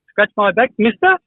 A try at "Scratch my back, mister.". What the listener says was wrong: Just higher on the mister because it goes too low.